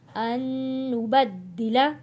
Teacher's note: فلا فلا اقسم اقسم برب المشارق مشارق والمغارب إنا لقادرون على أن نبدل یہاں پہ ہم نون جزم والے کے ساتھ نہیں جوڑیں گے، تشدید والے نون کے ساتھ حمزہ کو ملائیں گے اور غنہ ادا کریں گے۔